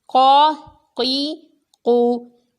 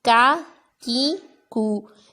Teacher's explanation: قاف پر پڑھنا ہے اور کاف باریک پڑھنا ہے